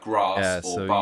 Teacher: So in the South we have a long a, so words like grass or bar.